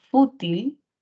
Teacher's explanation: Si hablamos de la palabra fútil, mayor fuerza de voz, sílaba tónica, no en la última, sino en la penúltima, sería grave